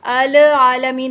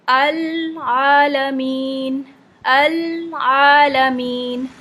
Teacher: आलमीन ऐसे करके नहीं पढ़ेंगे क्यों इसलिए एक तो ये कि लाम में कलकला नहीं होता ना इसको हिलाएंगे नहीं